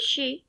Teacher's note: palato alveolar and the articulation mode is fricative